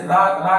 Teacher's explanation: इसमें जीवा हमारी ऊपर जाती है और झटके के साथ लुढ़क कर नीचे आती है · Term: लुंठित या प्रकंपित